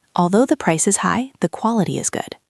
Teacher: >> The inonation with although is important. Your voice should go up in the middle and down at the end. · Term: musical curve